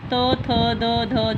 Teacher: जब हम इन व्यंजनों का उच्चारण करते हैं तो हमारी जो जीभ है, जो हमारी जीवा है, किसे स्पर्श कर रही है, हमारे दांतों को, जिस कारण इन्हें जो है इसका उच्चारण स्थान क्या है, दंत।